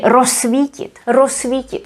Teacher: because the z and s are together, this would be pronounced as s. We pronounce it as just one s.